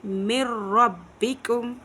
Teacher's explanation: नून साकिन या तनवीन के बाद अगर लाम, रा में से कोई हर्फ आ जाए तो वहाँ इदगाम गुन्ना के बगैर करेंगे। नून साकिन तनवीन के बाद अगर लाम और रा आ जाए वहाँ पे इदगाम बिला गुन्ना होगा, यानी कि गुन्ना नहीं करेंगे